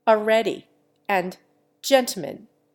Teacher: L disappears, as in already and gentleman.